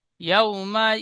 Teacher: ইয়া ওয়াও সর ইয়াও, ওয়াও second ডান দিকে যাবার এসেছে, একে ওয়াউলিন বলে। ওয়াউলিন নরম আওয়াজে তাড়াতাড়ি পড়তে হয়